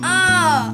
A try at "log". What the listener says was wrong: அதாவது நீங்க அதை ஷார்ட் பண்ணி ஆ அப்படின்னு சொல்றீங்க அப்படி சொல்லக்கூடாது. ல் ஆ லா கு லாக், அப்படிதான் நீட்டி நம்ம சொல்லணும்.